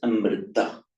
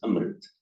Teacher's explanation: the modern languages of northern India, notably Hindi, Marathi, Gujarati, Bengali, they don't pronounce the final a. Mm. So what is Amrita in Sanskrit becomes Amrit.